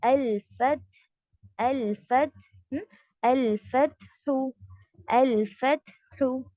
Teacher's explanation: अल्फत, शिद्दा हुआ, उसके बाद हम्स होगा